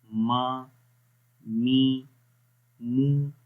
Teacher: تو جب میم کو پڑھتے ہیں تو آواز ناک کے اندر بھی تھوڑی سی گونجتی ہے